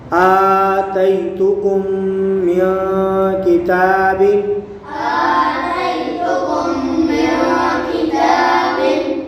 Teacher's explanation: यहाँ नून साकिन के बाद काफ आ रहा है, यहाँ इख्फा होगा, यहाँ भी गुन्ना करके पढ़ेंगे।